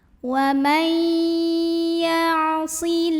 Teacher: La mad asli atau mad tabi'i karena ada baris fathah tegak di atas huruf lam. Cara membacanya dipanjangkan lamnya 2 harokat.